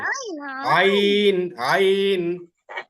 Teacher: হা আর আইন একই স্থান থেকে উচ্চারণ হয়, অর্থাৎ হলক এর মাঝখান থেকে।